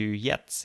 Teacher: so the T is dropped at the end